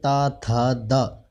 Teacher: जब हम त बोलते हैं त थ द, तो जहाँ पर हमारी जीभ स्पर्श करती है उसे तालु कहा जाता है।